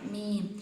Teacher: മീം രണ്ടു ചുണ്ടും മൃദുലമായി പൂട്ടണം